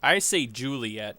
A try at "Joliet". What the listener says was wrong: not Juliet because it's an O and not a U. I pronounce it Joliet. The locals, I think, actually pronounce it Joliet. But not Juliet.